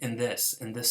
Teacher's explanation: this is a dental nasal because it's matching the following sound